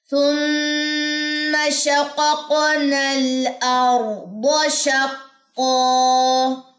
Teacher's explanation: را سے پہلے زبر ہے تو یہ جو را ہے یہ موٹی پڑھی جائے گی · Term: را موٹی